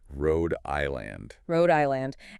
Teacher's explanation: The stress is on the first syllable of the second word